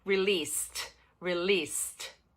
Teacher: De novo, o ED, ele vem com som de T. Este ED final aqui, você não vai pronunciar ED, você vai pronunciar com som de T.